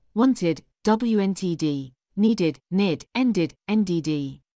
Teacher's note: the Ed ending is pronounced as an extra syllable